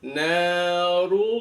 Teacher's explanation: Yang pertama di na nanya itu ada mad thau runya ro tafhim kemudian bertemu dengan lamul jalalah narullah lamdul jalalah lafaz Allah kalau di awali atau sebelum lafaz Allah itu ada huruf berarakat dummah maka lafaz Allahnya wajib dibaca tafkhim tebal